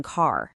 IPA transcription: ɑː